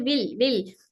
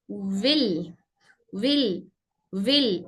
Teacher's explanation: पहले ही वाव को लाम की तरह, लाम के लिए वाव को बारीक नहीं करना है बल्कि पहले होंठ गोल करके वाव की आवाज के लिए होंठ गोल करे फिर उसके बाद जेर पढ़े